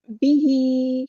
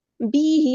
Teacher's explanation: ہا کے نیچے کھڑی زیر ہے تو مد اصلی کریں گے. بی ہی نہیں پڑھنا، با کو لمبا نہیں کرنا، ٹھیک ہے.